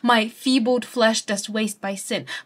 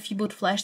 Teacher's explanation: this alliteration of feebled flesh, this fricative F